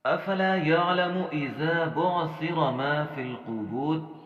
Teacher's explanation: یہاں پہ ہم نے را موٹا پڑھنا ہے اور آگے قاف کو بھی ہم نے موٹا پڑھنا ہے. یاد رکھیں ما فل، فا کی زیر کو ہم نے لام کی جزم کے ساتھ ملانا ہے، بیچ میں جو یا اور الف خالی ہیں انہیں ہم نے چھوڑ دینا ہے.